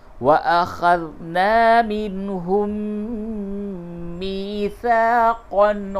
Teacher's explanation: میم کا میم میں ادغام مع الغنہ ہوگا